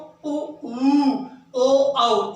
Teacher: इनका उच्चारण जो हमारी जीभ है उसके पिछले भाग से इनका उच्चारण होता है। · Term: पश्च स्वर